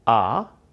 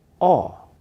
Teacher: With ah, your mouth is relaxed. Ah. With O, your tongue moves back just a little, but the big difference is your lips come forward and round a little.